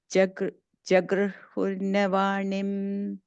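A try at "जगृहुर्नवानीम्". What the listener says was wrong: Vani, long E there, okay. The last word.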